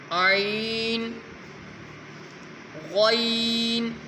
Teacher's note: عین بھی حلق سے نکلے گا اور غین بھی۔